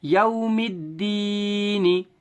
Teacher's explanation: یا ساکن سے پہلے دال کے نیچے زیر ہونے کی وجہ سے یا مدہ ہوگا. یا مدہ کو تھوڑا کھینچے اور معروف پڑھیں